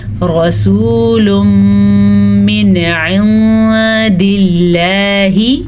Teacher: نون ساکن کے بعد حروف حلقی میں سے عین ہے تو نون کو بغیر غنے کے ظاہر کر کے پڑھیں گے · اس نون ساکن پہ اخفا کا قاعدہ ہو رہا ہے تو ہم چھپے غنے کے ساتھ پڑھیں گے